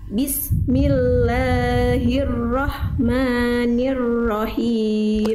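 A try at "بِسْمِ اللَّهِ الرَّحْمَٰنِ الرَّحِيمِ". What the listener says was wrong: Oke, sin sukun jangan terhenti. Bismillah, antara as dengan mi nggak boleh ada jeda. Tapi bismil dialirkan. Bismillah, bismi. Lalu la dan ma-nya jangan kepanjangan, 2 harokat. Bismillahirrahmanirrahim.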